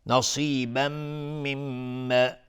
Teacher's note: صاد از حروف استعلاء غلیظ تلفظ میشه، تنوین بعدش میم ادغام با غنه و میم تشدید دار دو حرکت غنه میدیم.